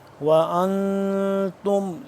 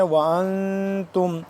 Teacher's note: اس پہ ہم اخفا کریں گے, نون ساکن ہے.